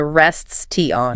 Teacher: >> You can, but you have to completely stop the air flow to hit the T and then restart it for the on. It ruins the cadence of the sentence.